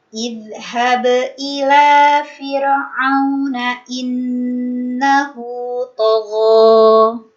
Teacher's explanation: pengucapan dzal sukun, gak boleh mengalir nafas ya, tidak boleh mengalir nafas, namun suaranya yang mengalir.